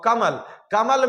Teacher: कमल में म पर बल दिया जा रहा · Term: बलाघात